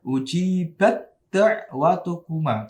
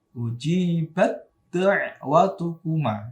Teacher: Maka bacanya adalah langsung taknya menjadi dal, ya. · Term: idgham mutajanisain